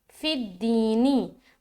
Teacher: उसके बाद दाल या ज़ेर दी, यहाँ पर या साकिन और उससे पहले ज़ेर, तो या मद्दा कर रहे हैं, एक अलिफ खींचेंगे